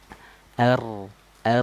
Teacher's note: makhraj huruf ra itu dari ujung lidah naik ke langit-langit. R, R, tidak R, R.